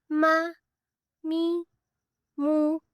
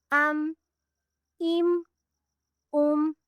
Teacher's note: دونوں ہونٹوں کو ملا کر ادا کرتے ہیں · دونوں ہونٹوں کے بیرونی خشکی والے حصے کو ملانے سے میم ادا ہوتا ہے